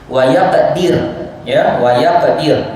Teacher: kita iskankan huruf ra, dan bacaan ra itu dibaca dengan nipis